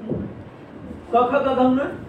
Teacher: कवर्ण पूरा सारा कंठ से बोला जाता है